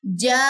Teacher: تو نون مشدد کا ہم نے غنہ بھی کرنا ہے. جانون، یہ 2 سیکنڈ اور یہ 6 سیکنڈ.